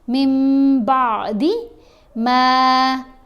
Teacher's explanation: جب نون ساکن یا نون تنوین کے بعد حرف با آ جائے تو نون کی آواز کو میم کی آواز کے ساتھ بدل کر پڑھیں گے. یہ آپ کو چھوٹی سی میم اوپر لکھی ہوئی نظر بھی آ رہی ہے.